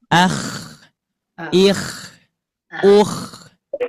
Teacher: Kalau untuk huruf KO ketika diucapkan ada suara ciri khas kasarnya, cuman si pita suara tidak ikut bergetar.